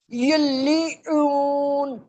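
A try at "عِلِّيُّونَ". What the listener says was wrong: علیون، گلی نہیں، علی عین، علیون، یا تشدید والا ہو، یا پر اگر تشدید ہو تو یا میں وائبریشن سی آئے گی جب پڑھیں گے نا یا کو،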